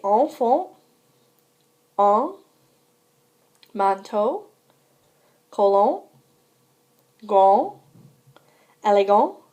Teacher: The letters A-N and E-N represent the nasal vowel. Be sure not to pronounce the sound N after the vowel.